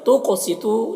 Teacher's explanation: قاف کو پر پڑھیں گے، اور قاف میں قلقلہ بھی ہوگا۔ سیتو تو کو پر پڑھیں گے، یہاں پر واو مدہ ہے، اسے ایک الف کے برابر کھینچ کر پڑھیں گے۔